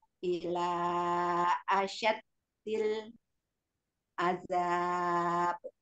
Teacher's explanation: Jinnya jangan ada tasdidnya, dalnya ada tasdidnya.